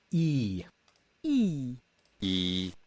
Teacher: the tongue is high in the mouth close to the teeth like close to the front of the mouth and the lips are unrounded